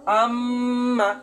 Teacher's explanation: ভিতরে বাসির মত বেজে উঠতেছে আমার এই বাজনাটাকেই মূলত গুন্নাহ বলে